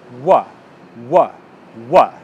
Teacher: instead of using a Y to begin the next word you use the W sound